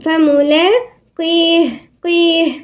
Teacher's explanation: والقاف أقل نسبة من التفخيم، ساعة ما تكون مكسورة بتقل نسبة التفخيم فيها، لكن المفتوح والمضموم في القاف مفخمة، لكن في الكسر هتلاقوا أقل نسبة من التفخيم.